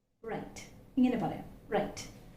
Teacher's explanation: it's a voiced post alveolar frictionless phoneme